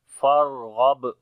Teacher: را کے اندر صفت توسط بھی ہوگی یعنی کہ وہاں پر آواز جو ہے وہ تھوڑی سی جاری ہوگی، نرمی آئے گی